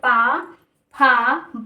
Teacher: हमारे ओंठों द्वारा बोला जा रहा है, जीभ का हल्का सा रोल है लेकिन हमारे ओंठों द्वारा बोला जा रहा है, इसलिए इसे ओष्ठ बोलते हैं।